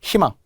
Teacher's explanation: 실없고 싱겁다. 희망, 이런 게 다 자음 플러스 의라서 이로 발음